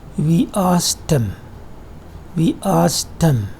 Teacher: there is the elision of D sound, and there is a conversion to T sound